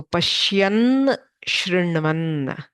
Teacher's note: So Na gets converted to Nya. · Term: Shchutva